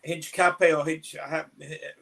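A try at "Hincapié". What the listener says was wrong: Don't pronounce the H.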